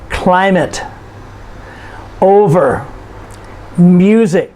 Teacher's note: these are two syllable nouns and you notice we stress the first syllable